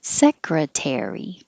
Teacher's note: you'll hear the vowel air, but it's longer, not higher.